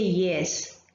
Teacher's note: when we say yes here the first in the initial sound in the word yes it is produced with the help of the hard palate